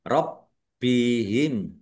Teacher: Bnya dibaca dobel, ada tasdidnya ditekan biar tampak dobelnya.